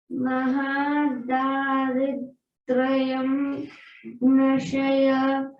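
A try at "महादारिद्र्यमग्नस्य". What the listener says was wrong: Magnasya. So, generally we chant it as Mahadaridra Magnasya. We forget that Ya. Poor Ya. Already it is not in any Varga. It is sitting in Avargya and first letter in Avargya. So if you forget it, it will feel bad.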